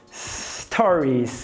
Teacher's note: cuidado para não colocar esse i epentético, não é story, ó.